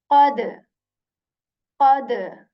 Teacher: back part of the tongue touches the soft palate with strength, and you say qad, qad. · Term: qaf